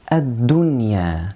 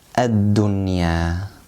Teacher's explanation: noon here is noon sakinah, and it is followed by ya, which is one of the idgham or merging letters, but we don't apply merging. Why? Yes, because merging has to be in two words, and this comes in one word only. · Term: absolute clear